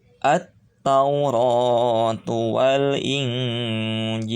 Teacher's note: alif lamnya ada tapi tidak dibaca karena ada tasydid setelah alif lamnya